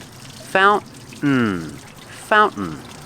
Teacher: that's the first pronunciation fountain or i can say fountain fountain with this pronunciation you put the tongue up like you're doing a stop t but you don't make the t you fall to the n sound